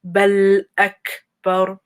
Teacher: The ba goes straight to the lam.